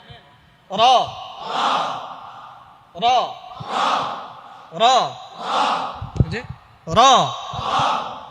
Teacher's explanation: রটা মানে যখন সিঙ্গেল উচ্চারণ করবেন এটার জন্য টাস টাস করে বাড়ি দেয় র।